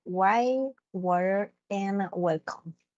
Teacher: All right, and the last one, it will be the W sound, which is a labiovelar approximant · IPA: /w/